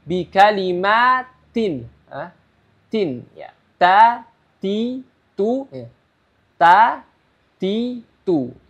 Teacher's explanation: Kalau huruf zal tadi digigit sedikit atau dikeluarkan sedikit za, kalau huruf ta ya, dia ujung lidah bertemu dengan pangkal gigi seri atas. Ya, jadi gigi seri atas kedua ini ya pangkalnya di bagian dalamnya ya. · Jadi lidahnya ditaruh, ujung lidahnya ditaruh di pangkal gigi seri atas ya.